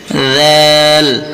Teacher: জিহ্বার আগা সামনের উপরের দাঁতের আগার সঙ্গে লাগাইলেই হয়ে যাবে